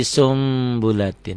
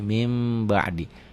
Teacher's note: Bunyi n-nya berubah menjadi m samar sedikit seperti Ikhfa Syafawi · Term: iqlab